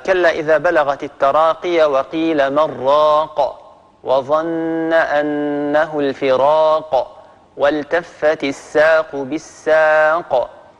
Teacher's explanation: هذه القافات كلها قافات متحركة، لكن لما وقفنا على هذه القافات سكنت بسبب الوقف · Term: القلقلة